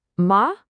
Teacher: It's just a simple straight shot from the top of your range to the very bottom. · It is a quick, decisive drop from high all the way down to low. It's not a gentle slide. · We're going to practice with the syllable ma that's just spelled m a. And we're going to apply that sharp falling fourth tone right to it.